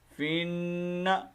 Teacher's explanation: فا کو ہم نے ڈائریکٹ نون کے ساتھ ملانا ہے، یہ شروع میں جو الف لام آ رہا ہے یہ نہیں پڑھا جائے گا